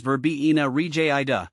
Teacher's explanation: The pronunciation is Verbena rigida, with the emphasis on the second syllable of both words